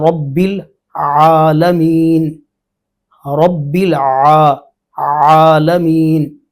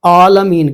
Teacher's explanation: عموماً اجمی لوگ اس کو حمزے سے بدل دیتے ہیں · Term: عین